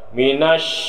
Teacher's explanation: Minash ini hukumnya adalah tafasyi, berhamburan nafas. Cara bacanya berhamburan nafas.